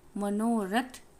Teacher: यहाँ भी वही हुआ है, अ प्लस उ ओ में बदल गया है। जो उ है वो पूर्ववर्ती अ से मिलकर ओ में बदल गया है।